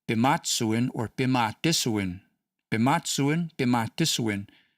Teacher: The pitch accent is on the third last in the way I'm pronouncing it regardless of how you spell it.